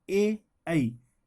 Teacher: कंठ तालव्य स्वर, इनका उच्चारण स्थान कंठ और तालु दोनों होता है, जैसे ए, आई।